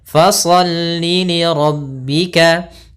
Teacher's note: Ada kesalahan yang sering terjadi, kesalahannya adalah dia memanjangkan huruf lamnya, fasalli li rabbika wanhar. Padahal li-nya di sini tidak ada huruf panjang berupa mad, maka tidak boleh panjangkan. Maka cukup pendek.